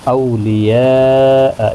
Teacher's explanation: اولیاء یہاں پر مد متصل ہے، اور یہاں پر چار الف کی مقدار کے برابر کھینچ کر پڑھیں گے